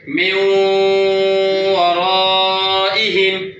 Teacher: নুনের পরে ওয়াও আসলে ওয়ার সাথে সঙ্গে মিলিয়ে গুণা হবে